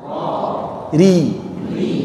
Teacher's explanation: Ada getarannya tapi sedikit.